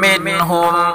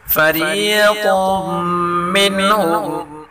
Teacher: وقد کان فریق منہم، را کو باریک پڑھیں گے اور قاف کو پر پڑھیں گے، میم مشدد غنہ کے ساتھ پڑھیں گے